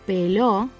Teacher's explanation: here the stress falls on the last syllable and it's topped off with a tilde.